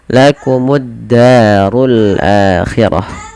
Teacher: alif lamnya diidgamkan dimasukkan ke huruf dal langsung ditekan di dalnya yang tasdid · Da ada mad tabi'i lagi, fathah bertemu dengan alif, 2 harakat panjang lafal da. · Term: alif lam syamsiyah